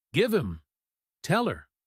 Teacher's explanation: the H gets scared and runs away leaving the vowel to connect with the verb. Give him tell her. · It saves energy. Instead of two distinct bursts of air for the H, we just have one continuous stream. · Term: disappearing H